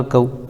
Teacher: واو ساکن سے پہلے کاف کے اوپر زبر ہے اس لیے واولین ہوگا، واولین کو نرم آواز کے ساتھ جلد ادا کریں